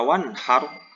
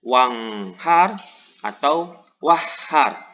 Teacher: bacaan izhar harus dibaca jelas atau terang tidak boleh tertahan karena apabila tertahan akan tertukar dengan suara dengung